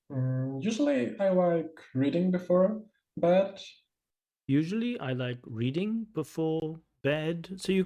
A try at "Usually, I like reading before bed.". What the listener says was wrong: Usually, I like reading before bed, so you can feel the chunking isn't quite there. The flow of speech and the rhythm isn't quite there. Usually, I like reading before bed. So it's, I understand exactly what the candidate is saying, but the rhythm is not quite there.